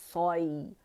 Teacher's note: پھر صاد کے لیے اگین ہم نے جبڑا کھولنے ہیں, سو, سو, صاد فتحہ سو, سوئی. اچھا سوائی نہیں بولیں گے, واو ایڈ نہیں ہوگا, لپس نہیں یوز ہوں گے. موٹے لیٹر میں یوزلی ہم لپس کو ایڈ کر لیتے, وہ نہیں کرنا ہے, ٹھیک ہے.